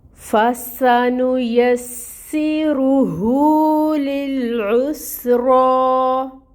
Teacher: نون کے اوپر پیش کی حرکت سنگل 1 کاؤنٹ، یا کے اوپر بھی فتح زبر کی حرکت 1 کاؤنٹ، سین مشدد ہے، ٹائم ٹیکنگ ہوگا، کسرہ کی حرکت ہے 1 کاؤنٹ پڑھی جائے گی، اور اس کی جو سفیر ہے سٹی ہے وہ بھی واضح کریں گے۔ رو کے اوپر پیش ہے، اس کو پر پڑھا جائے گا اور حرکت 1 کاؤنٹ ادا ہوگی۔ · سین کے اوپر فتح ہے، 1 کاؤنٹ ادائیگی ہوگی، اور سین کے اندر صفت ہے اس کی سفیر یعنی سٹی، تو وہ ہم واضح کریں گے · فا میں ہمس ہے، ہمس کو واضح کریں گے اور اس کی جو حرکت ہے وہ 1 کاؤنٹ ادا ہوگی۔